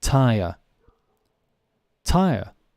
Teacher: a British person will say hair. The R is absent or not pronounced. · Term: non-rhotic